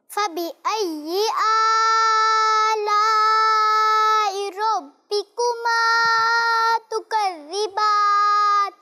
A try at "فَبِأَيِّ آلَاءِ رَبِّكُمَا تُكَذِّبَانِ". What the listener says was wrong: اچھا آپ نے آ میں آ کو بھی اور لا کو بھی ایک جیسا کھینچ دیا. آ کو ایک الف کھینچنا ہے اور لا کو کتنا کھینچنا ہے؟ 2 یا 2.5 الف.